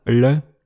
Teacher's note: une consonne rétroflexe, c'est-à-dire prononcée avec la langue recourbée vers l'arrière, le, et c'est apparemment un son qu'on peut entendre à Vienne ou à Graz.